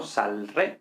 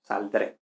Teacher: se mete en medio esta D epentética para facilitar la pronunciación